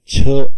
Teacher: श्वास व्यंजन वर्ण असतात छ हे तालव्य व्यंजन वर्ण आहे पुन्हा च मध्ये ह मिसळल्या छ ऐकू येतो म्हणून हा महाप्राण मिश्रित व्यंजन वर्ण आहे